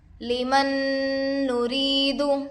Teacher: نون پر جزم ہے، نون ساکن ہوگا، نون ساکن کے بعد حروف یرملون میں سے نون دوسرے کلمے میں آ کر ہے، اس لیے گنہ کے ساتھ ملا کر پڑھیں گے۔ اس کو ادغام مع الغنہ اور ادغام ناقص بھی کہتے ہیں۔